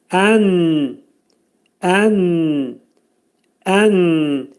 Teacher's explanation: Nun hərfinin məxrəci burunda açıq şəkildə, izhar şəklində çıxarılır.